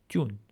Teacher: Remember that this letter in Western Armenian is Dun with a D sound, but in Eastern Armenian, it's with an unaspirated T sound